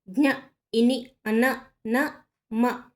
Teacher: ఇవి అన్నాసికాక్షరాలు, ముక్కు సహాయంతో పలికే అక్షరాలు. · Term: అన్నాసికములు